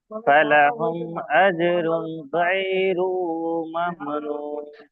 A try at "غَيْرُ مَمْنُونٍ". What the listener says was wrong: এই গয়রু আপনার টান হয়ে গেছে, গয়রু মামনুন।